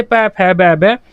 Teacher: हमारे होठ आपस में एक दूसरे को टच करेंगे। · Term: ओष्ठ